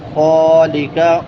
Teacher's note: ادنا حلق سے، ادنا حلق سے، حلق کے شروع والے حصے سے.